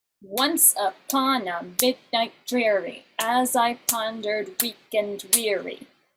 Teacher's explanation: So you have that trochee, da-da, and it's 8 times.